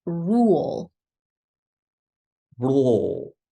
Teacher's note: it's a long vowel sound ooh and then we're going into the dark l o make sure that you have enough tension in the back